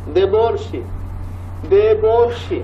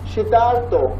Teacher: দেবর্ষি মাঝখানে অর, শীতার্থ মাঝখানে আর